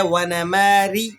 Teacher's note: رو باریک ہے، رو کے نیچے حرکت لگی ہوئی ہے